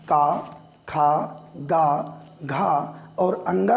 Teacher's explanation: जो आवाज़ है वो आवाज़ सीधे गले से आती है, अर्थात कंठ वाले ये व्यंजन हुए